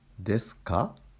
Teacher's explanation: Intonation normally rises on か.